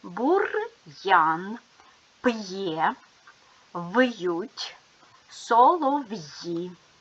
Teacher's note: Він показує що приголосний звук перед апострофом твердий а букви я ю є позначають два звуки йа й у й е